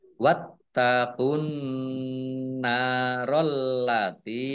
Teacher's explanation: Ditandai nunnya ada tasdidnya. Nun tasdid dibaca gunah atau mendengung, ditahan 2 harokat · Taknya dibaca double, ada tasdidnya. Alif lam samsiah karena tidak dibaca, langsung masuk ke huruf berikutnya yaitu nun. Ditandai nunnya ada tasdidnya.